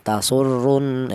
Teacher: Ini ada ro yang berharakat domah dibaca tafhim alasannya ro yang berharakat domah · ro yang berharokat dhammah dibaca tafhim